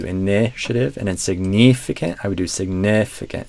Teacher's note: in that stressed second syllable, signif, you're doing a bit more of a E sound, and I'd say try to relax that vowel more towards an I sound.